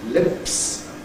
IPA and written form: lɪps (lips)